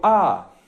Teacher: Es la vocal más abierta y es el más sonoro.